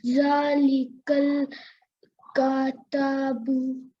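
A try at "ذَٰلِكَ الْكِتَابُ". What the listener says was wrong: Kaf has a kasra.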